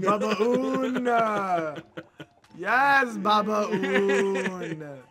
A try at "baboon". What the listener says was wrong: No, babaoon. No, you're saying ba. Baba. But it's a baboon.